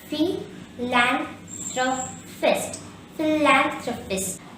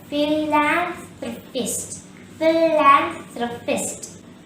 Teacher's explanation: The second syllable lan is stressed here.